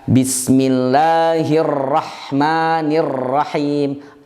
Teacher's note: Bergetarnya berlebihan, bahkan bukan bergetar lagi, tapi ro-nya berulang beberapa kali sehingga huruf ro-nya banyak. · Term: takrirur ra'at